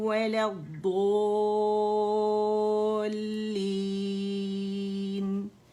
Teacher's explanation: ضالین جو ہے نا مد لازم کلمی مثقل ہے، یعنی یہ مد لیٹر جو ہے یہ ضاد کی آواز کو 6 کاؤنٹس ہر حال میں کھینچے گا، کیونکہ اس سے آگے شد آ رہی ہے جو اس بات کی کو شو کرتی ہے کہ اس کو ہر حال میں مد لازم کلمی مثقل بنانا ہے.